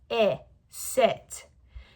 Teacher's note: I is made with our tongue relaxed and a little lower and our lips loose and relaxed as well.